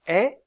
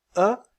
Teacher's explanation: voyelle E est arrondie vous sentez cette différence lorsque vous prenoncer quand je prononce e mes lèvres sont très étirées lorsque je prononce e elles sont plus arrondies